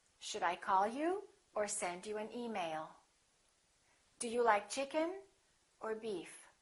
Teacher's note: falling intonation is also used when you're giving someone a choice